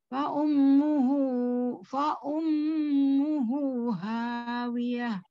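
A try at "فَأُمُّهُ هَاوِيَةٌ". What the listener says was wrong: Hunya 2 harokat, mim tasdidnya. Ya, disempurnakan lagi mim tasdidnya. Mim tasdidnya sempurna ya. Mim bertasdid itu gunnahnya paling tinggi ya, sempurna.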